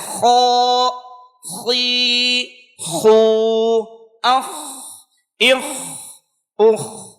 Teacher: اب ہونٹوں کو گول کر کے ادا کر رہے ہیں تو یہ بھی غیر درست ہے. ہونٹوں کو گول نہیں کرنا ہے، خراٹے کی آواز نہیں آنی چاہیے، اور اسی طرح سے اس لفظ کو پر ادا کریں گے. جیسے خو، خی، خو، اخ، اخ، اخ، اس طرح سے ادا کرنا ہے.